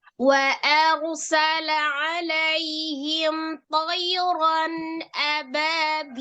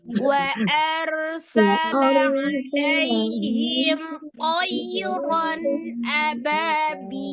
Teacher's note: Ya, karena sebelumnya ada fathah ya, karena ada sebelumnya huruf fathah. Harokatnya fathah, maka huruf ro-nya dibaca dengan tebal. Tapi huruf ro-nya juga sama itu, mengalir ya. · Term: ro sukun